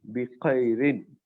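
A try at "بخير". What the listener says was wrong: नहीं, अभी नहीं आया, थोड़ा हम जो है जैसा करते हैं ना, तो वहां से जो है खा निकलता है। अभी नहीं आया, लेकिन हम आप आगे ट्राई करते रहिए, आ जाता।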